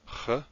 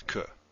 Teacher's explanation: it's a fricative or aspirant. It's a continuous sound, while K is a hard sound that stops.